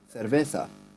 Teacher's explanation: where the C is pronounced more as a th